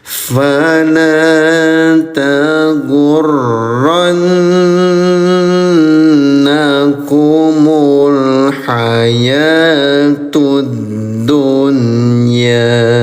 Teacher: Selanjutnya, ini ada huruf berwarna merah muda, huruf Nun dengan Shaddah, namanya Ghunnah. Nyanyikan juga selama dua ketukan · nun bertasdid, namanya gunnah, dengungkan selama 2 ketukan juga ya.